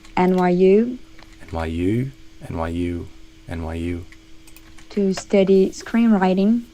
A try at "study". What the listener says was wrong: St versus sta. I would open that sound more. versus study. Study.